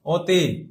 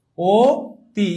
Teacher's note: অ যখন ও এর মত হয়ে যায় তখন এটাকে বলায় তোমার সংবৃত